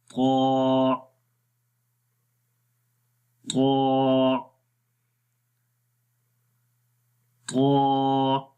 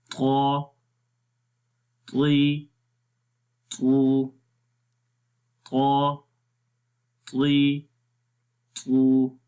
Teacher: ज़ुबान की नोक सनाया उलिया के जड़ों पर लग रही है जो कि अंदर वाली साइड में है